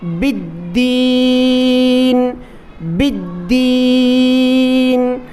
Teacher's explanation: یہاں دیکھیں دال پر تشدید ہے لیکن دال سے پہلے الف لام نظر آ رہا ہے، یہ الف لام خالی ہے اس لیے ہم اس کو نہیں پڑھیں گے، با کو دال کے ساتھ ملا کر پڑھیں گے۔ دال پر تشدید ہے اس لیے دال پر سختی بھی کرنی ہے۔